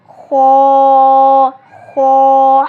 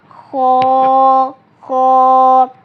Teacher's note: تو پیارے ساتھیوں، ہم خ کیونکہ موٹے حروفوں میں سے بھی ہے اور حروف حلقی میں سے بھی ہے، اس لیے ہم خ کو موٹا کر پڑھیں گے، اور خ ہمارے حلق کے سب سے نچلے حصے سے نکلتا ہے